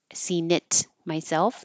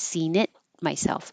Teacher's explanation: It is right here and it's before an M, and so you won't release the T